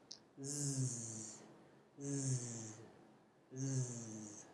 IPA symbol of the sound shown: z